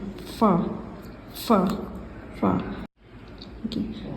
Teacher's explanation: next फ़ा को अदा करने के लिए हम लोग सनाया औलिया यानी ऊपर के दांत को नीचे वाले होंठ पर मिलाएंगे तो इसका मखरज अदा होगा